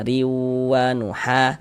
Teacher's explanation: Nah riwanuha, huruf ra memiliki harokat kasrotain ya, memiliki tanda baca di bawah nih ya. Maka ini huruf ra kita baca tarkik, kita baca tipis.